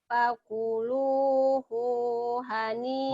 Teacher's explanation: Hunya pendek karena ada huruf mati.